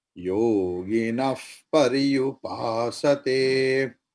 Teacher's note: Visarga is there, pa is there, so visarga will be fa